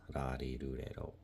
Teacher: ra, ri, ru, re, ro, it's a combination of an R and an L sound. So it's not ra, ri, ru, re, ro, or la, li, lu, le, lo.